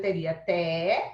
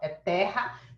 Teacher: em terra eu teria té, esse é aberto